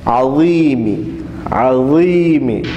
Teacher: زبان باہر نکالنی ہے اور ظا کو موٹا بھی پڑھنا ہے